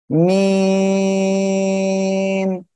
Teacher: দুই ঠোঁটের বাইরের অংশ বা শুকনো অংশ থেকে এই অক্ষরটা উচ্চারণ হবে মিম, এভাবে উচ্চারণ হবে এই অক্ষরটা।